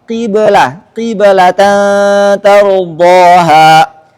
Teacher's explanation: Jika sebelumnya berkat kasrah maka bunyi qalqalah lebih dekat ke kasrah